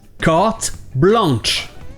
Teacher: le son « en » n'est pas super commun en anglais. Donc ils vont prononcer le N.